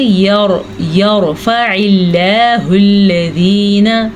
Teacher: جب را ساکن ہو, اس سے پہلے حرف کے اوپر زبر ہو تو را کو پر یعنی کہ موٹا کر کے پڑھیں گے. جب اللہ کے نام سے پہلے زیر ہو تو اللہ کا نام باریک پڑھیں گے.